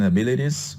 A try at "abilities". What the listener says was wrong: Yes, not abilities, but abilities, abilities. So that's speaking or pronunciation lesson number 11, the mit, meet, bit, beat. That you're having some trouble with those vowels.